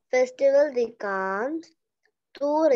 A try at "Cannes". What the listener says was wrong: Cannes. It's not Cannes. S will be silent. Cannes.